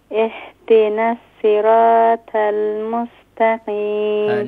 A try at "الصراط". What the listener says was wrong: الصراط إن صراط is صاد نو سين. صاد is pronounced full mouth. Now listen and follow me. اهدنا الصراط المستقيم.